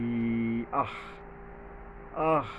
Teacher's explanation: আলিফের উপরে আলিফও এখানে হামজার রূপ ধারণ করবে হলকের গোড়ার থেকে শক্তভাবে